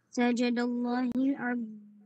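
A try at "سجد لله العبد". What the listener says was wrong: Ulit. Walang alif yan. Walang alif. Sajada. Ang word na Allah, walang alif.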